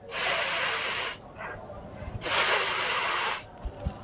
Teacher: তাহলে আমরা যদি উচ্চারণ করি সিন হরফটাকে, প্রথমে মাখরাজ, দ্বিতীয় নাম্বার, এর মধ্যে একটা গুরুত্বপূর্ণ সিফাত হলো, সিনের মধ্যে একটা গুরুত্বপূর্ণ সিফাত হলো হামস, অর্থাৎ শ্বাসের আওয়াজ হবে। তাহলে আমরা জিহ্বার আগাকে সামনের নিচের দুই দাঁতের পেট ও আগার দিকে লাগাবো, এক নাম্বার কাজ।